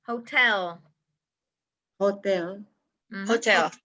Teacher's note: the stress the accent is on the second syllable